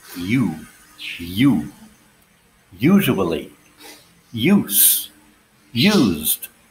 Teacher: what we call the long u sound is also a diphthong